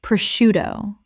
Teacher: The sc makes an sh sound in Italian, which English has kept.